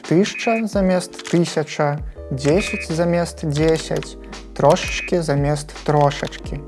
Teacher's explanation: мы часта праглынаем ненаціскныя галосныя, ад чаго гукі «а» і «я» проста знікаюць